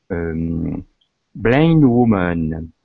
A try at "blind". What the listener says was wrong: Yeah, it's actually pronounced like a long I. It's sort of an exception. Something, but we pronounce it blind, so she can't